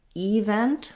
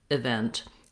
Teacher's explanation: the word event has the stress on the vent syllable, which means the letter E is going to be an unstressed I sound, event. I might even say it like a schwa, event.